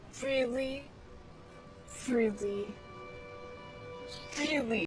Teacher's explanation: you can even hear vibrations when she pronounces the R.